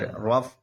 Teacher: یہ را پہ زبر ہے اس لیے موٹا ہوگا